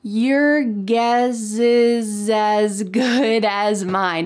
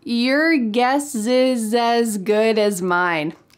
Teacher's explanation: We are linking together the S plus a vowel from the next word.